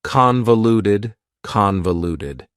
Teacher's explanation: Convoluted also has 4 syllables, and the stress is on the first syllable, convoluted. That second syllable, again, has that schwa sound, that reduced vowel sound.